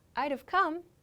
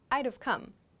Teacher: So I'd have come would probably be the way a native speaker would pronounce this, just as I've introduced here. My subject is I reduce would to d, and I make the v sound for have.